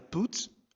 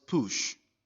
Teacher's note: when you pronounce the short U sound, you find out that your lips are rounded.